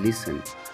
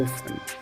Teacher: तो ये T और L जब साथ होते हैं, जनरली देखा गया है कि T और L साथ होते हैं, या फिर TEN साथ होते हैं बीच में, तो हमारी जो T की साउंड जो है, मीन्स ट की साउंड जो है वो साइलेंट हो जाती है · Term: साइलेंट टी